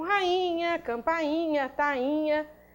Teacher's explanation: Nós temos hiatos tônicos em i, né, seguidos de NH no caso, ó.